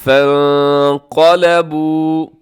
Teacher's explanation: یہاں نون ساکن کے بعد قاف ہے، یہاں آپ کریں گے اخفا ، فانقلبوا، قاف موٹا ہے، فانقلبوا بنعمة من اللہ، بنعمتن کے